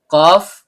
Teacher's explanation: pangkal lidah naik ke langit-langit di atasnya